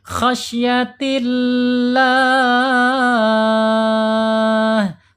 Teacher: lam jalalahnya dibaca tarqiq atau tipis. Kenapa? Karena sebelum lam jalalah harokat kasroh.